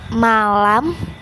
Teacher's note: pada pelafalan huruf M-nya, bibirnya itu merapat